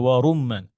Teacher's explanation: যখন আমরা রতে ফাতহা পড়ি তখন রটা আলহামদুলিল্লাহ সুন্দর মোটা হয়, কিন্তু আপনি যখন রতে এই দম্মা থাকে তখন রটা কম মোটা হয়।